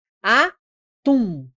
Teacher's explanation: Tum é a mais forte. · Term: oxítonas